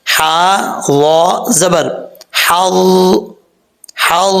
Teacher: ٹھیک ہے، اب یہاں پر کیونکہ وا کے اوپر شد ہے، اس لیے جب ہجے کریں گے ہا کو وا کے ساتھ ملائیں گے تو وا کے اوپر تھوڑا سا زور دے کے پڑھیں گے